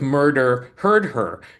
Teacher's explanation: You're not going to do that H. You're going to drop the H.